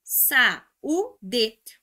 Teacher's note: O U, que é uma vogal, ficou formando sílaba sozinho e é tônico. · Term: regra do hiato